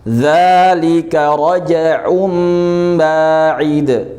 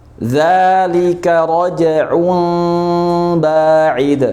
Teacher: Jadi pas kita ingin mengucapkan mim itu gak menempel. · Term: furja